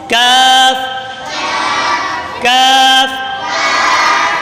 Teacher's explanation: کاف کا مخرج زبان کی جڑ اور تالو کے سخت حصے سے ادا ہوتا ہے۔